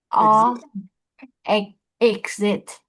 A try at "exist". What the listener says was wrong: No, exist. There's an S.